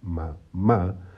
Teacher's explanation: la primera ma es la sílaba átona y la segunda ma que es donde está el acento donde está la tilde es la sílaba tónica Perfecto entonces aquí